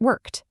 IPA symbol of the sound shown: t